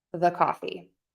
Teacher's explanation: The key is it is a super relaxed, unstressed, short, quick vowel. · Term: schwa